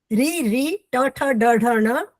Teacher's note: ये सारे मूर्धा से बोले जाते हैं